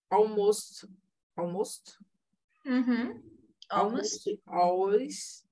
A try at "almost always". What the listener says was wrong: When you say almost, I always listen almoço. Always listen almoço.